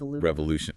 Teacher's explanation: It is 4 syllables revolution and the stress, you know the strong part of the word is on the Lu